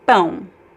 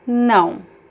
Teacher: Just remember that the an is very nasal.